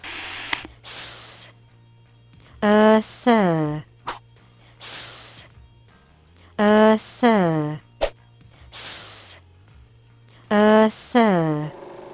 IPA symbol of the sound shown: θ